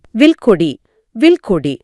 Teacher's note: இல் அப்படின்னு சொல்லும்போது நாக்கு மேல்வாயோட முன்பகுதியை தொடுது. உடனடியாக கோ அப்படின்னு சொல்ல தொண்டைக்கு பின்னால் போக வேண்டிய இருக்கு.